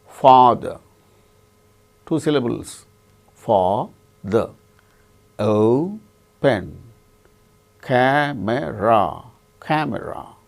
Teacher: In the case of all these three words, the first syllable is stressed